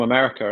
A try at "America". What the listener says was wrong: It sounded like you said America at the end, like an R, like America.